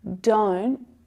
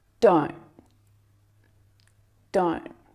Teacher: instead of hearing that t sound fully aspirated with that release of air to make the sound the stop T stops it short before the air is released it's like you catch the sound listen to the difference don't